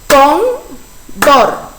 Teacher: Todas estas palabras llevan la sílaba tónica en el penúltimo lugar